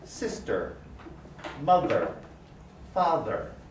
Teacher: If I raise even higher without pushing towards the front or pulling to the back, what I get is the sound It sounds a little bit like R, but it's not exactly R. It's an R, we call it an R-colored vowel.